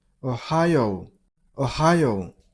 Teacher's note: Stress on the middle syllable.